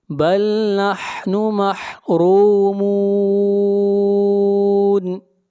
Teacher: بل نحن محرومون، را کو موٹا پڑھیں گے، را کے اوپر پیش ہے، اور را کو کھینچ کر پڑھیں گے اس لیے کہ یہاں پر واو مدہ ہے اور یہاں پر مد عارض وقفی ہوگی، اس مد کو 3 الف کے برابر کھینچ کر پڑھیں گے